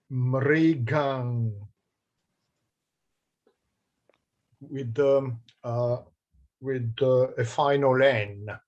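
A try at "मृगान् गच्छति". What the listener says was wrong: And be careful to make that longer. Mrigan gacchati.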